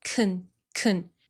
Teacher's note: The vowel in the modal verb can is usually reduced to schwa because this word is unstressed in a sentence.